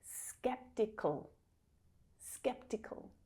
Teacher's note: So there's no vowel sound here, but we move very quickly between the k consonant sound, where we're making that sound at the back of our throat, and then quickly moving the tongue up behind the teeth into the position of the O consonant sound. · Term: syllabic consonant